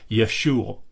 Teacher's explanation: it probably was pronounced something more like Yeshua where you're constricting the throat to to end the ooh vowel rather than adding that little